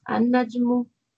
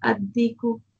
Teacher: examples of the assimilation of the lam of al to the solar letters